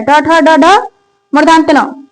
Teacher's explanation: ट ठ ड ढ मूर्धांत न, सबका क्या है? उच्चारण स्थान मूर्धा है।